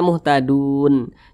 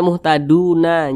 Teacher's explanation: huruf nun harus kita matikan harus kita sukunkan